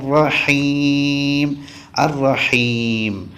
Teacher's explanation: ആ മീം ചുണ്ട് പൂട്ടിയ രൂപത്തിലാണ് പറയേണ്ടത്